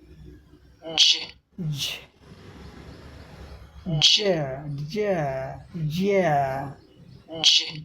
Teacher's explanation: अब combined sound symbol एक यहाँ भी है, आप देख रहे हैं यह, जैसे आप ड पढ़े थे और झ साउंड, दोनों के कम्बिनेशन से यह बना हुआ है